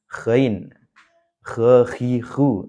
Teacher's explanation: tempat keluarnya yaitu tenggorokan bagian atas nah silakan di situ dipaskan ya tenggorokan bagian atasin nah sekali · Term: huruf gain